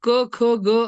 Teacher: आपण जेव्हा क ख ग असा उच्चार करतो तेव्हा त्यात अ हा स्वर मिसळून आपण त्यांचा उच्चार करतो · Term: व्यंजने